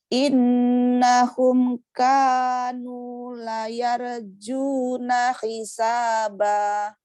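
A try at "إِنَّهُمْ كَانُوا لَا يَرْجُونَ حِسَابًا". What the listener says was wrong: La-nya panjang sama ka, nu, la, panjangnya sama tuh tiga-tiganya. Ka-nya, la-nya jangan dikurangin. In-nya 3 panjangnya.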